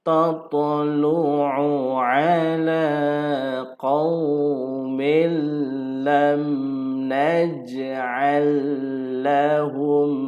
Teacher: Ini dengun mim mati dengan mim. Idgham mislain kena dengun.